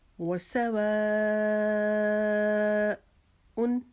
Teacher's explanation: سوا کے اوپر جو مد ہے اس کو ہم 6 انگلیاں لمبا کریں گے